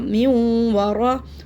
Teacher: वा होंठों को बिल्कुल गोल रखना है